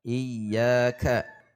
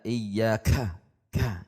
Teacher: Ka juga tidak dibaca dengan terlalu banyak udara sehingga terkesan lebai. Ya, biasa saja.